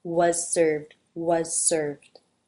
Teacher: Was, the teeth come together to make the Z. You might actually hear the Z here simply as the S because it's followed by an S, so the Z might just get dropped.